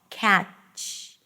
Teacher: Cat. So the ch is actually a blocked T, and then this extra sound, this fricative